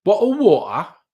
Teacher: that's a very Cockney thing, not saying the T's.